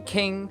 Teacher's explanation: the obstruction occurs when the back of the tongue touches the soft palate at the back of the mouth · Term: Velar